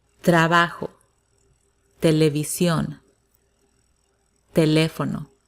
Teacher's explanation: it's softer it's not explosive it doesn't sound like it doesn't have that little air that you produce when you say the t in english